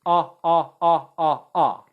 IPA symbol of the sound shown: ʌ